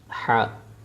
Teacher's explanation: حا کا مخرج حلق یعنی گلے کے درمیان والے حصے سے ادا ہوتا ہے